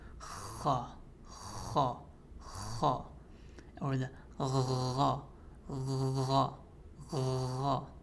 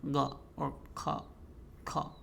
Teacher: these letters have softness to them, meaning that when you pronounce them, the sound of the consonant is elongated. So you have to have that kind of rough kha, kha, kha, or the gha, gha, gha.